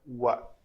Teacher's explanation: واو شفتین گول، شفتین کہتے ہیں ان دونوں ہونٹوں کو